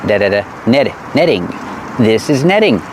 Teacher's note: the T in netting is pronounced like a fast D.